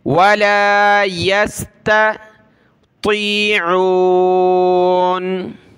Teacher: بڑی طا ہے، موٹا کرنا ہے اس کو، طا یا زیر طی، ولا یستطیعون۔